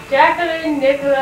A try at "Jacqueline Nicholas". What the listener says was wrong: You're using your lips. Does that mean you have to close your mouth? Or?